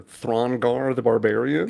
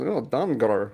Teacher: he pronounces th's like d's